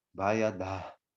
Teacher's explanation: Esse H com ponto embaixo, esse som, esse diacrítico, esse pontinho, significa que a gente aspira, a gente solta o restinho de ar e fala Bayada. Bayada é um som aspirado, o som passa pela nossa garganta, roçando as cordas.